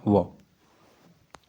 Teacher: ऐसे व्यंजन जिनका उच्चारण नीचे के होठ और ऊपर के दांत के मिलने से होता है। दंतोष् व्यंजन कहलाते हैं।